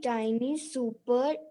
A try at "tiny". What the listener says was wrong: Tiny, bache, not teeny, tiny. say the word tiny.